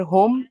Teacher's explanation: ठीक है और होम, हा जो है वो जो है दम्मा है, तो उसका जो हा की साउंड होगी वो होंठ आपके थोड़े से गोल होंगे ठीक है दम्मा की वजह से।